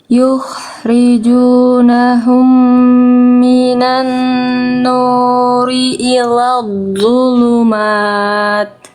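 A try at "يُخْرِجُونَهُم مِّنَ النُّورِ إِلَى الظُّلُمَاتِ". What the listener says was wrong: Ini udah mulai bagus loh-nya. Ya bagus, mulai bagus.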